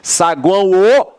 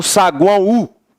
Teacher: Mas quando ele está na mesma sílaba que um A, ele exerce a função de semivogal. Ele vai ter som de U